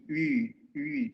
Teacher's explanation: So this sound is actually in German pronounced as, it's not U, it's not E, but your lips are like U, but you say E, U, U, so that way.